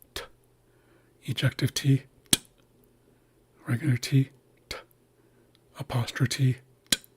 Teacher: If you hear any kind of um vibration happening in your vocal cords, it's because of the vowel coming after the T. The T itself is completely voiceless. And so is the ejective T.